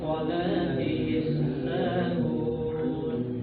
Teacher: Jadi salatihim pangkal lidahnya diangkat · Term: tafkhim